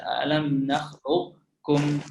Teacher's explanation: ada sedikit pendapat atau beberapa ulama yang berpendapat bahwasanya huruf qaf menyisakan sifat isti'la